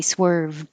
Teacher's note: i don't have to say the d i can say swerve